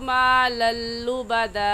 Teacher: तनवीन के बाद हुरूफ यरमलून में से लाम आ गया है, इसलिए इस तनवीन पर हम गुन्ना नहीं करेंगे